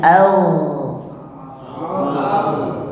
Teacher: Huruf ghain itu rukhwah. Rukhwah artinya suaranya mengalir. Ya. Bukan angin yang mengalir, tapi suaranya mengalir.